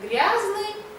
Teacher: А между мягким и твёрдым согласными произносится а